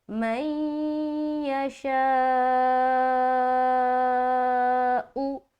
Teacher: آگے من یشاء، لیکن جب یہاں پر اگر آپ کو رکنا ہے تو حمزہ کے اوپر سکون لگا کے حمزہ جھٹکا ہوگا ہلکا سا